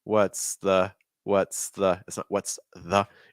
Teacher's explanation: notice that linking between the S and that th